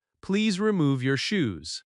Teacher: You hear the stress on remove and shoes, so you understand quickly.